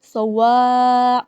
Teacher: واو کی الف کے اوپر بڑی مد ہے، اسے 5 الف کے برابر ہم پڑھیں گے، لمبا پڑھیں گے